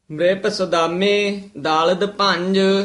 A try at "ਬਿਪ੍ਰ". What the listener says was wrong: ਬ੍ਰਿਪ ਨਹੀਂ ਕਹਿਣਾ ਬਿਪਰ ਉਚਾਰਨ ਕਰਨਾ ਪਪੇ ਦੇ ਹੇਠਾਂ ਲਾਰ ਰਾਰਾ ਬਬੇ ਦੇ ਹੇਠਾਂ ਨਹੀਂ